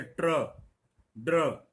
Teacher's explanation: और ये ट वर्ग में आता है, ट और ड स्वर रहित होंगे, र स्वरयुक्त यानी 100 किलो का होगा। उच्चारण ट ड के बाद र का होगा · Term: पदेन र